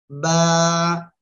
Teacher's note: দুই ঠোঁট, দুই ঠোঁটের ভিজা অংশ থেকে এ অক্ষরটা উচ্চারিত হবে